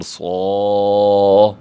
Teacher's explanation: صاد حروف مستعلی میں سے ہم پر کر کے موٹا کر کے پڑھیں گے